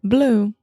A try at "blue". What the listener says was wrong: Okay, you're saying blue, and you're really like, oh, at the end. Try to say blue, ooh. Yeah, so with these ooh sounds in English, we really we round our lips a lot.